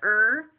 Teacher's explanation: the R is normally a palatal liquid where the body of the tongue touches the palate